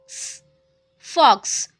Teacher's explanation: Two sounds together K plus S.